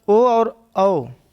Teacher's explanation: कंठोस्थ आपका कंठ और ओंठ दोनों को मिलाकर जो उच्चारण किए जाते हैं आपके कंठोस्थ कहलाते हैं। आपके दो स्वर ओ और औ ये आपके कंठ और ओंठ से उच्चारित किए जाते हैं।